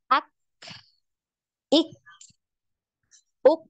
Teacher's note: Huruf kaf ini tertahan juga suaranya, jadi tidak punya aliran suara.